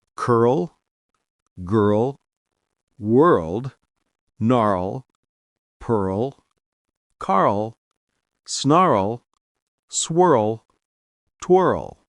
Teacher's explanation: Dark L words, L comes at the end of the syllable, pronounced like O.